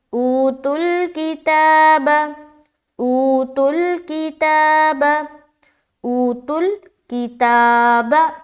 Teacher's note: تا میں کھینچ رہے ہیں کیونکہ کھڑا زبر ہے اور کھڑا زبر الف مدہ کے برابر ہوتا ہے۔